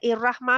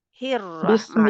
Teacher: तो ही को मिलाएं रा के साथ, हिर रहमा, क्योंकि बिस्मिल्लाहिर्रहमानिर्रहीम।